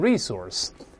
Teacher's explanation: 但在美国还有人把重音往前读